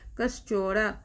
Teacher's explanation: विसर्ग के बाद च है, इसीलिए यहाँ तालिवी स हो गया, आधा तालिवी स, कस चौरा हो गया।